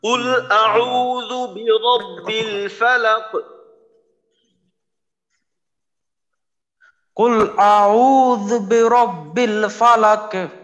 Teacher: যেন লাক একবারে শেষ না হয়, 2 বারে আওয়াজটা হবে · আউ, এখানে এক আলিফ টানতে হবে, র মোটা করে পড়তে হবে, শেষে কফে কলকলা। আরেকবার বলি, কুল আউযু বিরাব্বিল ফালাক।